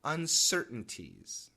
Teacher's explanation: if we say it quickly uncertainties there's a glottal stop